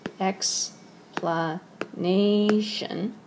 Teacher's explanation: And remember that one, explanation, stress goes on the penultimate syllable, not the final syllable